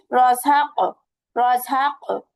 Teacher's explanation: জিহ্বার গোড়া থেকে তার বরাবর উপরের তালুর সঙ্গে লাগালে হবে কফ, 2 নোক্তা কফ।